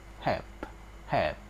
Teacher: Take p in the word help, for example. When we sound the word help, we don't sense the vibration of vocal cord at the end of the sound. · You see that p sound comes from the movement of our lip. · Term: voiceless consonants